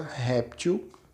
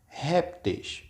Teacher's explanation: é uma palavra paroxítona ou seja a penúltima sílaba mais forte quando eu vou trocar pelo plural vai ficar assim répteis ou